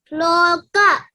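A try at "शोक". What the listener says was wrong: Shoka. No, don't add L for that. Is that SHOKA? Shoka.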